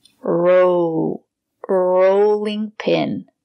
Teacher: Use the long O. The sound is very low.